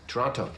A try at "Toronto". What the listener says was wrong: Toronto. Canadians don't pronounce the T.